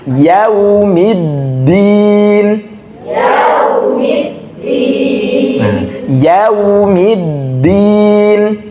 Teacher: Kemudian masuk ke tasdidnya huruf dal. Dal dia bukan huruf hamz, jadi jangan sampai keluar bukan keluar nafas, jangan sampai terhembus nafasnya.